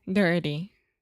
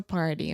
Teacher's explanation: one more example of where we often see the flap T in English is when you have an R before the T